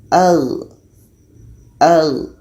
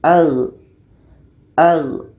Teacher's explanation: Az [Musik] huruf seterusnya gho kita bantu lagi dengan alif. G tadi letaknya pada ujung tenggorokan. Jadi kalau kita bantu dengan alif dibaca dengan ag.